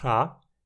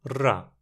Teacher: e 2 vibrantes, uma surda ra e uma sonora ra